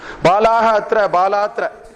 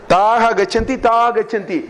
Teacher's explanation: The Visarga is gone. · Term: Lopa